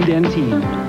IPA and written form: ˌdɛnˈtiːn (Dentyne)